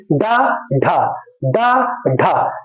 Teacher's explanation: झटके से हमारी जीवा ऊपर की ओर उठ रही है